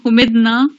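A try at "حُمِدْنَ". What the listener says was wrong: ہاں یہ نا کو کھینچے نہیں.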